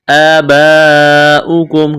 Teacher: وَلَا تَنكِحُوا مَا نَكَحَ، الف مدہ ہے، آباؤکم، کڑا زبر، ایک الف کے برابر کھینچنا ہے، لمبی مد ہے، اس کو کھینچنا ہے 4 الف کے برابر